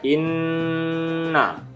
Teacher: gunnah ditemukan pada nun bertanda tasjid. Inna ditahan minimal 2 harokat.